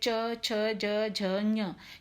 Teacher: ये पांचों वर्ण जो हैं ये तालु को जीभ छूते हुए इसका उच्चारण होता है। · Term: चवर्ग